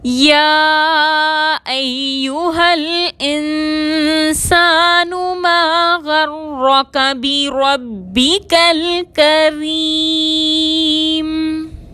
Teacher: ما غرک میں را مشدد پر زبر ہے، را کو موٹا پڑھیں گے · بربک الکریم میں با مشدد کو 2 حروف کے برابر وقت دے کر ادا کریں گے